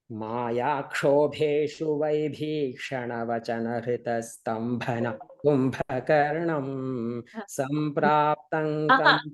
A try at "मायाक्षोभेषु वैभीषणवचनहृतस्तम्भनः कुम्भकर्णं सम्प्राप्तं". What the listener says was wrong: Ulta, the tune ulta.